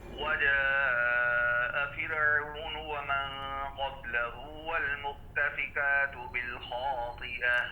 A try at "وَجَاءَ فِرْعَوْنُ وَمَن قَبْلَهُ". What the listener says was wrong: فرعون کی راہ ہل گئی ہے اور آپ نے قبلہ کی با کا قلقلہ بھی نہیں کیا. وجاء فرعون فرعون فرعون را کو لانا نہیں ہے.